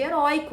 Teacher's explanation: penúltima sílaba tônica que é o caso de heróico né porque nós temos como sílaba tônica o ri que é a penúltima sílaba